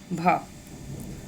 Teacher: हिंदी में घोष महाप्राण ओष्ठ व्यंजन ध्वनि भ है